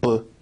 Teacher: the sound B is considered a voiced bilabial stop